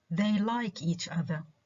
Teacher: the words each other such as in they like each other each other um these two words when they come together are not stressed · in this sentence the only stressed word is the verb like